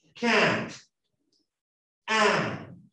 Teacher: Can't es el punto medio entre la A y la E.